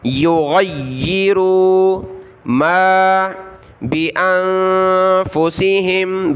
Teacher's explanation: اور غین کو گلے سے نکالنا ہے